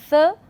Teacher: So, when you say th, that is the tip of the tongue behind the upper front teeth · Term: dental